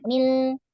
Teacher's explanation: Nah, jadi mim itu kan ada gunnah. Nah, setelahnya ada lam. Nah, lamnya jangan dari hidung.